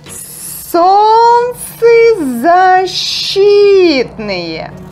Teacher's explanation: И is stressed, but since this word contains two words, we pronounce it with two stressed vowels.